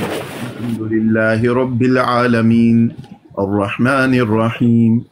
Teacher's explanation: उन्होंने कसर किया, सिर्फ 2 हरकतों के बराबर लंबा किया। तो 2 हरकतों के बराबर भी लंबा कर सकते हैं, 3 से 4 के भी कर सकते हैं, और 4 से 5 भी कर सकते हैं।